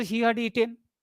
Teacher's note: So all the subordinate clauses are spoken in rising tone. After he had eaten, this is a subordinate clause. It is spoken in rising tone.